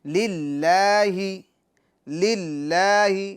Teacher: لفظ اللہ کے لام کو باریک پڑھیں گے کیونکہ لفظ اللہ کے لام سے پہلے زیر ہے